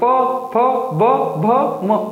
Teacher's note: ओष्ठ से बोला जाता है प वर्ग, प फ ब भ म, मतलब होठ आपस में मिलेंगे।